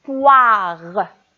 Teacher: On entend wa dans la première syllabe, alors au début. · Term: son wa